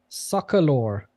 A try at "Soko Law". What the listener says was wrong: Soko. SO. It's not soccer. It's Soko. I think. Yeah, Soko Law. SOKO. Soko. Soko Law.